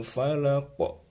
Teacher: sukun maka banyak harus mantul Ya itu namanya Qalqalah juga termasuk huruf Qalqalah maka harus mantul ketika disukun